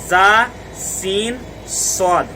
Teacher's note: زبان کی نوک اور ثنایا سفلا اور ثنایا علیہ یعنی اوپر اور نیچے کے دانت اور ان کے کنارے سے جب یہ نوک مل جائے گی تو زا، سین، صاد ادا ہوں گے